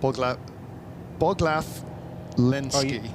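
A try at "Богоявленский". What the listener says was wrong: Are you saying those are L's rather than I's? Bogiavlensky.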